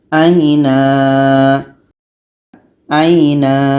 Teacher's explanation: A ini pendek. Yang panjang na, sebab tanwin atas pada akhir bacaan menjadi panjang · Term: mat iwad